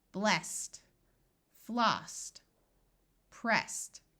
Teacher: Ed also sounds like a T in words that end with the unvoiced S sound